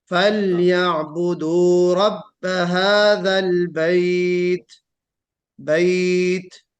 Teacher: बैत कहते वक्त क्या करना है, हम्स जाहिर करना है ता में